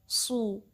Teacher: इसमें क्या होगा कि ये सीन की तरह साउंड है लेकिन ये हैवी लेटर है, दैट मीन्स आपने जो बैक पोर्शन है अपना टंग का वो रेस करना है ताकि थोड़ा ये हैवी अदा हो